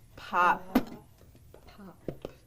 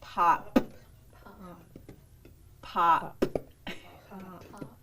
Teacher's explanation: we're going to alternate regular with the glottalized p